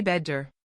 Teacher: We flap it, making it sound like a very soft, fast D. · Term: flap T